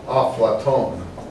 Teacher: They don't have a, in English it's Plato, but in Arabic it's Aflaton. So they often put a vowel before the consonant to make a new syllable